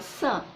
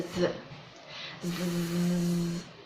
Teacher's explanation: make the sound sun and turn it into a zoo z your lips and tongue stay in the same position you're not changing the place